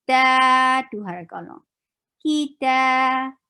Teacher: Ki is short. Ta 2 haraka long.